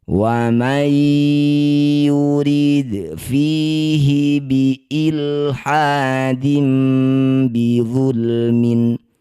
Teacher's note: Wa may nun sukun bertemu ya disebut bacaan namanya idgham bi gunnah. Masukkan bunyi nun pada ya dengung 2 harokat.